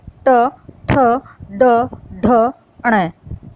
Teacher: जब हम ये वर्ण बोलते हैं तब जो हमारी जीभ है वो मूर्धा मतलब तालुव्य से थोड़ा ऊपर मूर्धा पे टच करती है। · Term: मूर्धन्य वर्ण